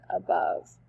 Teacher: an unstressed syllable followed by a stressed syllable, as in above. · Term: iamb